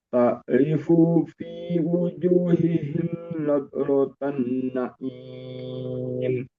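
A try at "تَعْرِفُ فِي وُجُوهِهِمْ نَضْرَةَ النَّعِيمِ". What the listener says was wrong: Baik, sedikit tempo dari fu menuju ke fi. Jangan sampai ada yang ditahan. ta'rifu fi. Langsung ta'rifu fi wujuhihim.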